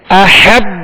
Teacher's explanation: با کو جھٹکا بھی نہیں دینا, اس پر زبر ہے بغیر کھینچے بغیر جھٹکا دیے